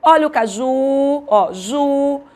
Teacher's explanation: a sílaba tônica é a última